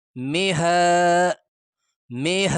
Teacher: کھڑا زبر کو ایک الف کی مقدار کھینچا جائے گا